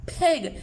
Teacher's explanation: can you feel a puff of air on your finger